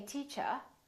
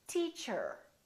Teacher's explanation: In British English, people generally don't pronounce the final R, the R at the end of the word. So they say teacher. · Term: British R